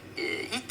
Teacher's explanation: notice the H in heat kind of disappears when you're doing it in a French accent. It would be eat, so it's almost like you're eating something. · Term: The H goes away